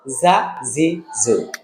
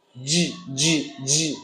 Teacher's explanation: যাটা হলো জিহ্বার আগা দিয়ে এরকম একটা সাউন্ড দেওয়া হবে, আর জিমটা হলো জিহ্বার মধ্যখান দিয়ে